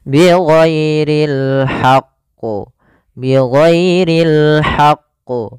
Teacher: harus ada alhaqqu tapi di sini karena dia ada huruf tasdidnya ditekan dulu qnya baru ditasdidkan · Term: Qalqalah Kubro